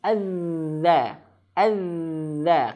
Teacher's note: ujung lidah menyentuh ujung gigi seri atas. Nah, seperti itu. Dan ada sedikit suara ya bukan sedikit mengalir suaranya. Azza. Azza karena dia memiliki sifat arrakhawah atau arikhawah. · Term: huruf dalal